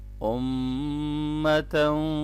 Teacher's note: یہاں میم مشدد پہ غنہ ہوگا